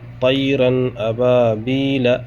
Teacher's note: یہاں آپ دیکھ سکتے ہیں تنوین کے بعد حمزہ آ رہا ہے۔ اب یہاں ہمیں نون ساکن کو ظاہر کرنا ہے اور غنہ نہیں کرنا ہے، جلد پڑھنا ہے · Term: اظہار